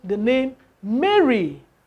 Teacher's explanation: Mary is a noun word, and the stress should be on the first syllable.